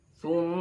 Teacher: Thumma gunnah. Dengung dan tempatnya di khayshum, pangkal hidung.